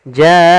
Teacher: ada bacaan gunnah yaitu nun berharokat tasydid